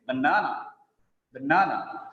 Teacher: The second syllable is stressed there.